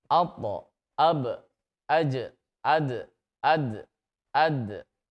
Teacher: Nah, ini untuk bunyi suara qalqalah. Dipantulkan, hati-hati mantulnya ke arah bunyi fathah.